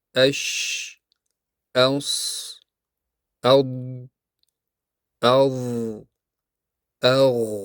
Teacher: Demak, raho harflarda havo oqimi to'xtamaydi. Tovush biroz cho'zilib eshitiladi. Bu sifat shiddahning sakkizta harfidan tashqari qolgan harflarga tegishli.